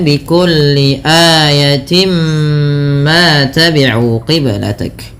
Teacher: Kemudian pada lafal timma ini merupakan bacaan idgham bighunah. Sehingga bunyi awalnya tin bertemu dengan mim. Suara tinnya masuk kepada huruf mim. Maka dihukumi dengan bacaan idgham bigunah dengan menahan bunyi suara mnya sepanjang dua harakat.